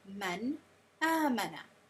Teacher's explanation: So you're pronouncing the letter from its makhraj without the ghunna. So there's no ghunna in idhaar. It's just making every letter clear and obvious.